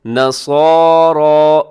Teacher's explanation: ہودن او نصارى، اسے او کو آؤ نہ پڑھیے گا، آؤ غلط ہو جائے گا، او ہونٹ آپ کی گول ہو جائے۔ نصارى، صاد بھی موٹا ہے، را بھی موٹا پڑھا جائے گا